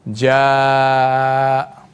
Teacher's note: So you lengthen it for 6 beats.